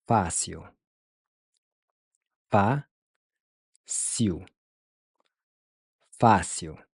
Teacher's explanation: Notice how the il is pronounced iu, like you just saw something gross.